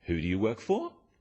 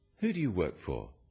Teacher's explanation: when you ask people questions about themselves in English use a falling tone it sounds friendlier